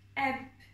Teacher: E sesimiz B ile birleşecek. Ve B'nin üzerinde duracağız. B'ye ses vermeyeceğiz. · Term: sükun